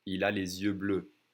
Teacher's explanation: you see how I connect the S that's usually silent to the next vowel sound